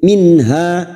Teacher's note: nun sukun dibaca jelas tanpa mendengung. Minha, ha dua harokat kita panjangkan, fathah diikuti alif dan kita waqaf pada tanda qaf lam, al waqfu aula.